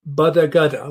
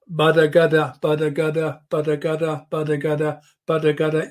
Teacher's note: there's no sound going up my nose. It's not nasal.